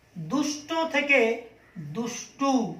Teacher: শেষে স্বরধ্বনির আগমন ঘটেছে, তাই এর নাম অন্ত স্বরাগম।